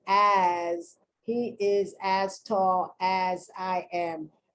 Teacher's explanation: they're pronouncing the s like a z